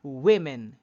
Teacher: in the plural form the wo sounds like we